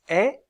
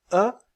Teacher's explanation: voyelle E est arrondie vous sentez cette différence lorsque vous prononcez quand je prononce e mes lèvres sont très étirées lorsque je prononce E elles sont plus arrondies